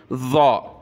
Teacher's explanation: इस ज़ा में ज़बान की नोक ऊपर लगती है, सामने के जो दांत है ऊपर वाले उनकी अंदर की साइड से ज़बान की नोक टच होगी